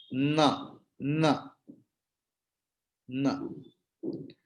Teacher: na is na, but the thing is when the na is pronounced by touching the teeth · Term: danta varna